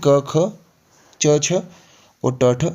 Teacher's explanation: ये सारे नीचे तक ये हमारे होते हैं अघोष ठीक है इनमें कंपन नहीं होती है